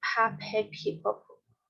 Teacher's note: esse P que vaza sopro, que é o soprado